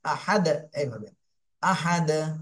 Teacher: তাহলে সাকিন দিয়ে পড়তে হবে, আর দালে সাকিন থাকলে কলকলা হয়ে যায়, এখানে আমরা কলকলা করে পড়বো।